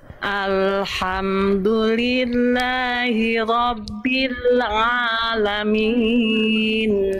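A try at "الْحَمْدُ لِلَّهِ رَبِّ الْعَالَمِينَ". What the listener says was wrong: oke sedikit lagi ainnya masih agak masuk hidung a Jangan a ya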